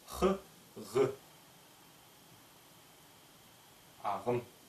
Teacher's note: Добавьте голос «х», «г». Получится задняя звонкая щелевая «г»